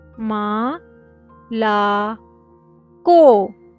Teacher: Stressed and unstressed O in Russian. The letter O when it is stressed it is pronounced as O but when it is unstressed it will be pronounced as A.